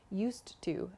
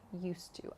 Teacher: There's just one sound there, used to. So think of it as dropping the D